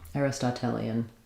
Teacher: So we would probably stress on the tel syllable.